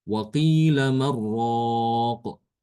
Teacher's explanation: karena di sini nun sukun Setelahnya ada ro ya. Maka di sini berlaku hukum idgham. Idgham tanpa gunah.